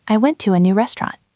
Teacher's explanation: We often drop the first T.